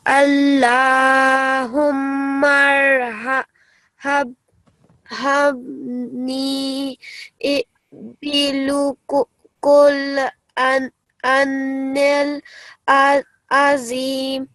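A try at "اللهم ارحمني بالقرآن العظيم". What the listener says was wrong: So just a point here, the lam here, above it, it's not a dhamma, it's a sukoon, yeah? The dhamma is the apostrophe type one, which is on the qaf. So this is Allahumma arhamni bil Quran, okay? This is not bilu, bil Quran, okay? And also above the alif, it's the vertical fatha. So bil Qur'ani, 2 seconds, okay?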